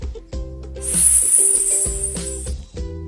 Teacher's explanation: Le son S se prononce S comme le serpent. La pointe de la langue touche les dents du bas. L'air passe au milieu de la langue. Il n'y a pas de vibration dans les cordes vocales.